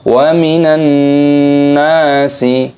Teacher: ada nun tasydid, hukumnya dibaca gunnah, didengungkan dan dipanjangkan pada nunnya, ada matobi'i.